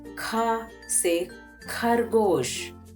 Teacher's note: As we say in English A for apple, we say in Hindi kha se khargosh. Observe that kha is said with ha sound.